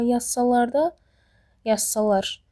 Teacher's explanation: Amma yazsalar da yazsalar burda sonuncu hecadadır.